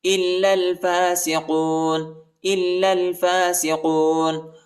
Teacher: حمزہ کو جو ہے لام کے ساتھ ملائیں گے، الف نہیں پڑھا جاتا، نہ یہ دوسری والے الف پڑھا جاتا ہے، ٹھیک ہے، اور لام کو جو ہے دوسرے والی لام کے ساتھ ملائیں گے۔